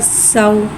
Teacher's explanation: वाव साकिन है, वाव साकिन से पहले ज़बर हो रहा है, वाउलीन हो रहा है, लिहाजा वाउलीन को बगैर खींचे बगैर झटके दिए नरमी से मारूफ पढ़ेंगे और वाउलीन को होठों की गुलाई के साथ अदा करके पढ़ेंगे। सीन वाव ज़बर सौ।